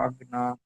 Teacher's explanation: ওয়াজাদাকা ইলান আগনা আটা আরো টান দিবেন, কেন? ওটা হচ্ছে মধ্যে মুত্তাসিল, হরফে মাদের পরে জি হামজা এসছে, সেজন্য আর একটু বেশি টান হবে